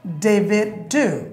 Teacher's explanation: D er pore, jodi next word ta arekta consonant diye shuru hoy, jemon D, then prothom D ti bad chole jay.